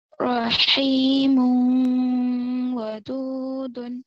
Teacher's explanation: ادغام مع الغنہ ہوگا یعنی غنے کے ساتھ پڑھیں گے